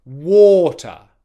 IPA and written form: wɔː.tə (water)